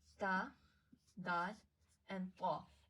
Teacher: It will be pronounced from the tip of the tongue and the roots of the upper front teeth